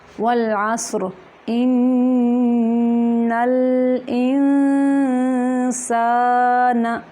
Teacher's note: ان پہ غنہ ہے اور انسان پہ اخفا ہو رہا ہے، آواز کو چھپا کے نکالیں گے ناک سے۔